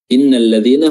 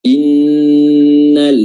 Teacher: Pada tasydid nun kita durasinya agak lama, dan pada tasydid lam tidak berdurasi melainkan hanya bertasydid.